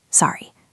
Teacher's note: If you say sorry with a falling tone like sorry, it sounds like you are apologizing for a mistake. But sorry with the voice going up tells me I missed that.